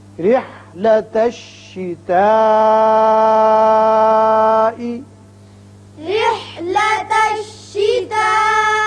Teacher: را کے نیچے جب زیر آئے تو اس کو باریک پڑھتے ہیں. اب یہاں مد ہے، مد متصل بڑا مد ہے، لازمی 5 حرکات کے برابر آپ اس کو اوپر کی طرف کھینچیں گے.